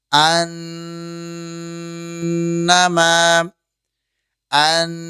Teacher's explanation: Minimum we have to stretch 3 seconds, 3 alif and we can go up to 5 alif, means 5 seconds. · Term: ghunnah